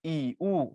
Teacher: উচ্চ স্বরধনি জীব উপরে থাকে একদম ই উ জীব একদম উপরে থাকে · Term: উচ্চ স্বরধ্বনি